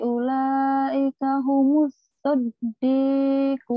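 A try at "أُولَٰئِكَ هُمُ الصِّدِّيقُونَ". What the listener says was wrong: Salah, kok sodokun, sidikin. Sidikun. Wa rasulihi ulaika humus siddiqun.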